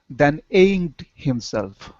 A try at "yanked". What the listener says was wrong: Pronounce that Y. Yanked. Then yanked himself.